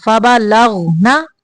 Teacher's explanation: غین کو قلقلہ نہیں کرنا